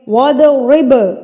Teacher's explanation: با ساکن ہے. با ساکن پہ ہم قلقلہ کریں گے. قلقلہ کہتے ہیں لفظ کو ہلا کے پڑھنا، تھرتھراہٹ کے ساتھ پڑھنا، تو اس کو ہم ہلا کے پڑھیں گے.